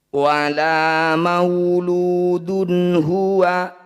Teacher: Wala mauludun huwa, ada dhammah tanwin bertemu ha, disebut bacaan izhar halki. Bunyi dhammah tanwin baca dengan jelas tanpa dengung.